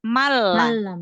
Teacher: nggak ada sisa dari huruf nunnya, nggak ada sisa gunnah. Malah langsung masuk. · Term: idgham bila gunnah